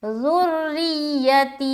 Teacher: را کو باریک رکھنی ہے کیونکہ را مشددہ کے نیچے زیر ہے. اگر زبر ہوتا تو موٹا پڑھتے، لیکن زیر ہے تو باریک رکھنی ہے.